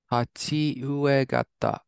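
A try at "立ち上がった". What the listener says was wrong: Hai, this can be ue. In this contract, it's actually a. So tachi agatta.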